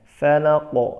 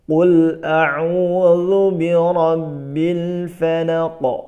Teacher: Qul a'udzu birabbil falaq, bukan falaq, jangan dipanjangkan tetapi dipendekkan, falaq, dan qafnya diqalqalahkan, dipantulkan. Perhatikan sekali lagi.